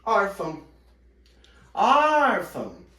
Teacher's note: Então a sílaba tônica é o or e não o fã.